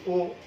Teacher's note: আমরা যখন বলছি ও তখন মধ্য পশ্চাৎ